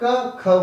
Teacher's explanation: Vibration नहीं होगा जब आप क ख बोलेंगे, लेकिन ख बोलने में क से ज्यादा ताकत लगानी पड़ती है। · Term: अघोष